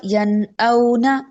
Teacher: यहाँ पर यन औना में नून साकिन है, उसके फौरन बाद हरूफ हल्की में से हमजा आ रहा है, तो कौन सा कायदा हुआ? यन औना, नून जाहिर हो रहा है। अब यहाँ पर मैं गुन्ना नहीं कर रही, यन ये गुन्ना नहीं हो रहा, यहाँ पे इख्फा नहीं हो रहा।